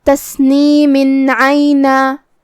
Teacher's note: اگر ہم یہ آیت کو اگلے آیت کے ساتھ پڑھے تو جو کہ حرف العین ہے کلمت عینن میں اور عین حروف الاظہار میں سے ہے تو ہم یہ تنوین کو ظاہر کریں گے اور اسے نون ساکن پڑھیں گے اور بغیر غنہ سے یہ حکم کو ادا کریں گے